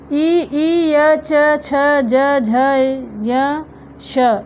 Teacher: इनके ताल हैं। ताल कहते हैं तलवा को।